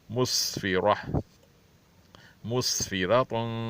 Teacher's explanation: सीन हुरूफ सफ़ीर में से इसलिए इसकी सख्ती से अदायश होनी चाहिए और हुरूफ सफ़ीर में इस तरह अदायगी हो कि उस पर सीटी सी आवाज़ निकले, मुस्फ़िरा, मुस्फ़िरातुम।